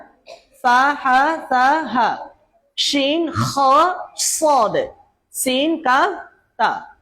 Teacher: হরফগুলো দুর্বলতার সাথে উচ্চারিত হবে, কিন্তু বাতাস চালু থাকবে। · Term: হুরুফে মাহমুসা